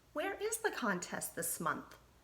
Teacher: kind of raise my voice at the end which told me that's a question I'm asking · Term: raised my voice